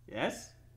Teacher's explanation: you said that with a question mark at the end of yes there was a rising intonation